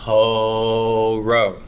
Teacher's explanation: So we're aspirating. We are breathing an H sound out along with that vowel. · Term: rough breathing, Aspiration